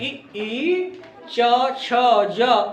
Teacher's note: जीवा हमारी तालु को टच करती है